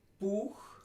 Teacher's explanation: This one is U, and it's a long, high, back, rounded, tense vowel.